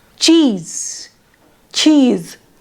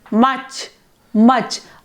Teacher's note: the correct CH pronunciation includes a stop sound like TCH